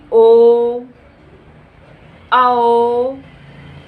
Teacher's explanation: इसका उच्चारण कहाँ से होता है, गले और ओष्ठ पर बल पड़ता है, प्राणवायु बाहर आती है इसके उच्चारण में ओ, आओ, गला और ओठ दोनों एक साथ मूवमेंट करता है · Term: कंठ ओष्ठ ध्वनि